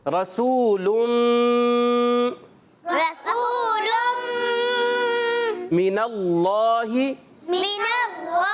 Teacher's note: غننے کے ساتھ ادغام کریں گے